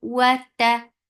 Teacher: Ta for fatha open jaws, the sound is short and very sharp. There is no flow of sound.